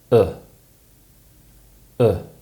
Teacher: it's produced with less tension in the tongue and when we do this it creates a more centralized sound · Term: uh sound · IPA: /ʊ/